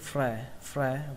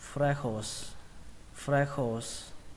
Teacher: Ở đây trọng âm của nó rơi vào âm đầu tiên fre, fre và xuống giọng âm khổ.